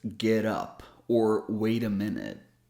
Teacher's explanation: we can also use this tap t sound to connect words so if we have two words and the first word ends